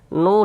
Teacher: Ada waw sukun sebelumnya ada harokat dhammah, maka huruf yang memiliki harokat dhammah ini kita baca panjang. Sehingganya nu kita baca panjang, seperti itu. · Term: Mad tabi'i